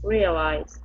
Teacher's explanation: our stress is at the very beginning